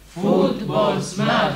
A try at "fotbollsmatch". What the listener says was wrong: Längre O i fot. Fotbollsmatch.